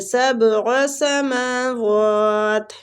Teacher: میم اور وہ دونوں کے اوپر کھڑی زبر ہے، تو کھڑی زبر کو ہم ایک ایک حرکات کھینچیں گے، ایک دوسرے کے قائم مقام دونوں کو کھینچیں گے، ٹھیک ہے.